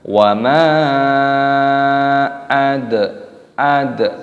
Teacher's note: dalnya sukun dibaca mati, dikolkolahkan, dipantulkan suaranya